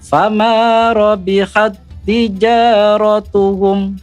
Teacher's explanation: cara membaca fama rabihat tijaratuhum itu tidak didengungkan. Cukup ditekan saja. Tekan. Fama rabihat tijaratuhum. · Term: idgham mutamasilen